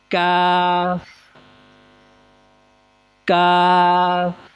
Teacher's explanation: کاف زبان کی جڑ اور تالو کے سخت حصے سے